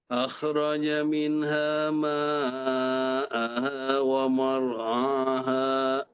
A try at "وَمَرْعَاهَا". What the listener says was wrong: ومرعاها. Maknya jangan ikut tebal. Enggak. ومرعاها.